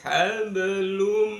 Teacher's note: Hablum, hablun bertemu dengan mim, di sana diperkuat dengan ada tasdid di atas mim. Itu menunjukkan wajib bunyi n pada hablun dimasukkan ke dalam mim. Jadi hablum, namanya bacaan idgham fi gunnah, dimasukkan dengan mendengung.